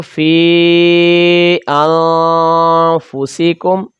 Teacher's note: مد منفصل کی لمبائی 2 سے 3 الف کے برابر کھینچ کر اس کو پڑھیں گے